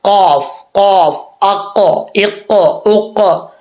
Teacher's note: पर उर्दू में कवा बोलते उसका कवे के ऊपर वाला हिस्सा नरम तालू जो है उसके साथ जुबान की जड़े लगती है तो ये कफ पढ़ा जाता है दो नुक्त वाला कफ कफ